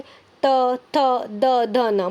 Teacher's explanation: मतलब त वर्ग के जितने भी वर्णों को दंत से बोलते हैं